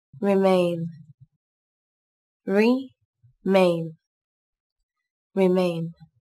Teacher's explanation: Các bạn lưu ý từ này có hai âm tiết, trọng âm rơi vào âm tiết thứ hai các bạn nhé. Từ này có chứa nguyên âm A.